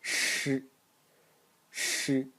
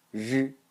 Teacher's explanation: I will first show you this syllable unvoiced, and then I will just turn on my vocal cords